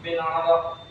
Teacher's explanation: Alasannya huruf qalqalah di akhir kalimat diwaqaf. Cara bacanya dipantulkan keras. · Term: qalqalah kubra